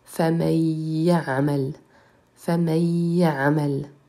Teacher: on retire le nun de famen et on le remplace par le son y, puisque c'est celui qui suit le nun, ce qui donne famayya'amel, famayya'amel.